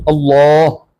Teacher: اس لفظ اللہ کی لام موٹی پڑی جائے گی